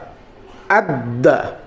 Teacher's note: এখানে দালটা ডবল উচ্চারণ হলো দুইবার উচ্চারণ হলো